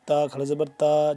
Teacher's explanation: تو اس کو لمبا کریں گے ہم ایک الف کے برابر کھڑا زبر کو، جبکہ اس کو ہم 2 سے 3 الف کے برابر لمبا کریں گے، اس کو میم کھڑا مد زبر ما کو.